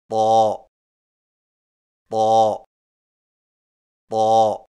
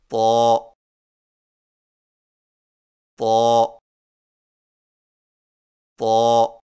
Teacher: زبان کی نوک کو سامنے والے اوپر کے دو دانتوں کی جڑ سے لگا کر اور زبان کے پچھلے حصے کو تالو کی طرف بلند کرتے ہوئے موٹی آواز میں پڑھیں